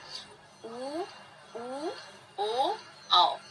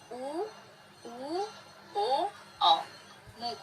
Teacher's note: वृत्तमुखी स्वर में मुख वृत्त के आकार का खुलता है, अर्थात ओठ को गोल करके जिन स्वरों का उच्चारण होता है उन्हें वृत्तमुखी स्वर कहते हैं।